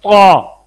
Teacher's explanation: زبان کا نوک بھی اوپر گئی ہے، زبان کا درمیان بھی اوپر گیا ہے، زبان کی جڑ بھی اوپر گئی ہے